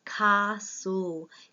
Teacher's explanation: the T in that word is actually silent. I don't make the T sound in the word castle.